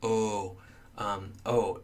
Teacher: sort of notice your lips make this OH sound Oh Oh your lips are rounded for this and so oh is a rounded vowel